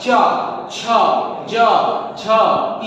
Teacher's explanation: चा, छा, जा, झा, इया, ये तालु के सहायता से बोला जाता है